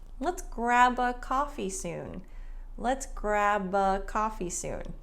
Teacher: So the B in grab links to the A sound. So grab a. Let's grab a coffee soon.